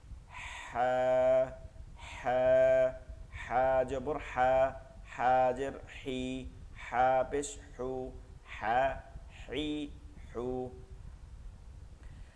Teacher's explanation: গলার মধ্যে থেকে বাতাসকে বের করে নিয়ে এসে ফিস ফিস আওয়াজে বলতে হবে।